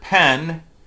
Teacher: And then in the word pen, in the sound that we symbolize phonemically with a P, there is a lag between my lips parting and my vocal folds vibrating. And we call that aspiration.